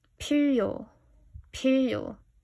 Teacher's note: We have an aspirated P like we saw in the word for 컴퓨터, computer, P, with a puff of air.